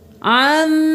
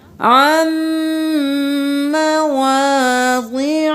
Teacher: آیت نمبر 46، عن نہیں کرنا، عین کو میم کے ساتھ ملانا ہے، میم پر تشدید ہے غنہ